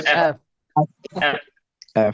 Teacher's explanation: এফ যখন বলব আমার দিকে একটু তাকান উপরের দাঁতটা নিচের ঠোটে লাগবে আপার উইল টাচ ইর লোয়ার লিপ লোয়ার লিপ আমরা এমন এফ